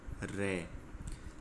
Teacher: और ऐसा एकमात्र वर्ण है र। आप र का उच्चारण करोगे तो जीभ है वो दो-तीन बार कंपन करेगी। तो इसलिए इसको प्रकंपित व्यंजन बोलते हैं क्योंकि इन सभी का जो आधार है वह उच्चारण है।